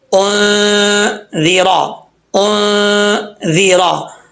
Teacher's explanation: زال کے نیچے زیر ہے، یہ نارمل پڑھا جائے گا، اس زال میں سیٹی نہیں ہے